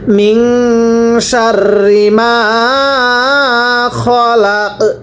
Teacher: ওয়াকফ বলি, ওয়াকফের সময় শেষ হরফে সাকিন দিয়ে পড়তে হয়, তাহলে কফের উপর জবর আছে সাকিন দিয়ে পড়ব, খলাক কলকলা করবেন